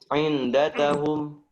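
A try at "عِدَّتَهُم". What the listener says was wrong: Iddah. Dal. Tasjid. Shaddada. Bukan. Dalnya tasjid. Iddah. Bukan inda. Iddatahum. Dal. Tasjid. Dalnya bertasdid. Bukan inda. Iddah.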